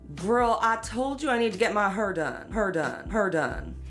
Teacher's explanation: a feature in African American English in places like St. Louis and Memphis called the near-square nurse merger, or R centralization.